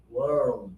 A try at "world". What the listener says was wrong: I heard the two syllables.